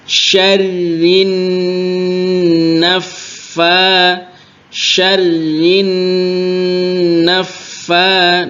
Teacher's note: tidak hanya dua berjajar ya tasydidnya tapi tiga ro tasdid Nun tasdid dan Fa tasdid jadi ditekan tiga-tiganya syarina syarin naffa Nun tasdid didengungkan yang lama rinna jadi di